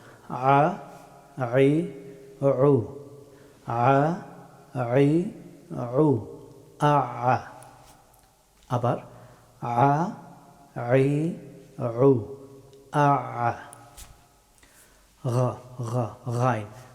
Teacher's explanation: আইন হরফটি উচ্চারিত হয় গলার মধ্যখান থেকে এই জায়গা থেকে আইন হরফটি উচ্চারিত হয় এটা অত্যন্ত কঠিন হরফ অনেকেই সঠিক ভাবে উচ্চারণ করতে পারেন না